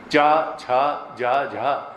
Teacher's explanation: जब तक तालु में जा करके जीभ नहीं लगेगी इनका उच्चारण ठीक नहीं होगा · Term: चवर्ग